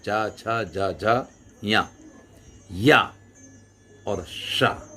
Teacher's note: चवर्ग, चा छा जा झा या और शा, इनका जो है उच्चारण स्थान तालु है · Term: तालव्य